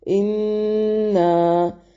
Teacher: اِنَّا نون مشدد پہ غنہ ضروری ہے اور یہاں پر جو مد بن رہی ہے یہ مد منفصل · مد منفصل ہے، اس کو 4 سے 5 حرکات کے برابر لمبا کر سکتے ہیں